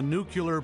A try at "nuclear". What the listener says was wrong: You said the word wrong. It's nuclear. It's pronounced nuclear. It's nuclear. You're adding a U in there.